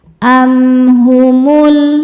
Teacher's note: Am am ada hukum izhar syafawi. Karena mim sukun tidak menghadapi mim ataupun huruf ba, maka mim sukun dibaca izhar atau jelas.